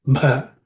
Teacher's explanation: Both the bhas have to be aspirated. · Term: aspirated consonant